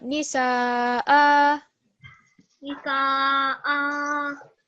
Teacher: with fathatain, it becomes 2 second prolongation. So it's not going to be a sukoon, it's going to be a vertical fatha on this hamza.